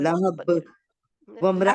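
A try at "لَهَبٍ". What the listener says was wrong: लहब। आप ना बा के लिए होंठों को सख्ती से मिलाती हैं, लहब, जहाँ पे सख्ती से नहीं मिलाना, आप गौर से सुने, लहब लहब एक दूसरे से मिला के तो छोड़ देना है, ऐसे सख्ती से नहीं करना।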